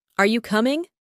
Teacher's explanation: The stress is on you.